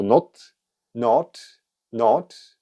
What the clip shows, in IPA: nat, na: